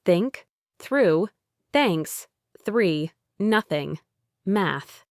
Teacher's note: For this one, your tongue is positioned between your teeth, and you push only air through that small gap. There's no vibration in your vocal cords. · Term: unvoiced